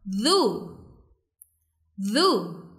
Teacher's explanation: huruf dal yang makhrajnya ada di ujung lidah bertemu dengan ujung gigi bagian atas. Jadi bacanya duzu duzu.